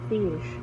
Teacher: Hello everyone, today I will be demonstrating three IPA vowel sounds. First, is a short vowel sound produced with the tongue slightly raised.